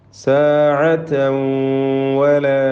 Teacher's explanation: തൻവീനിനെ ശേഷമുള്ള വാവിൽ ലയിപ്പിച്ച് മണിക്കണം. ഇദ്ഗാം ബിഗുന്ന.